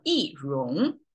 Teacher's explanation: Because of rong is a rising tone. So we have a falling tone, 一 before it.